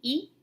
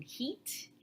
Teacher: So this is high front unrounded tense vowel